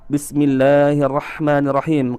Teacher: memanjangkan huruf lamnya dengan mengatakan Bismillah, yang sebenarnya adalah Bismillahirrahmanirrahim, akan tetapi dipanjangkan menjadi Bismillahirrahmanirrahim.